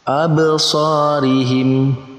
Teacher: Maka cara membacanya yaitu dengan memantulkan huruf ba yang berharokat sukun. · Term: qalqalah